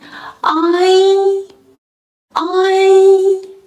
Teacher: the I is a front low vowel. The mouth opens wide, lips flatten, and the tongue's tip touches the lower teeth. In I, E subtly guides the tongue.